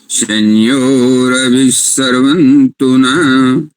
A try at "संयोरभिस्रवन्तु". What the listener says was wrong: सर्वंतु न करें, श्रवंतु।